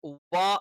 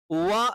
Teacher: വ എന്നുള്ള ഉച്ചാരണം രണ്ട് ചുണ്ടുകൾ വൃത്താകൃതിയിൽ വെച്ചുകൊണ്ടായിരിക്കണം വ എന്നുള്ള അക്ഷരം ഉച്ചരിക്കേണ്ടത് അല്ലാതെ നമ്മൾ നമ്മൾ സാധാരണ രീതിയിൽ പല ആളുകളും തെറ്റായി ഉച്ചരിക്കാറുണ്ട് പഫ എന്നുള്ളതിന്റെ